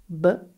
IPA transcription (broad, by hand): b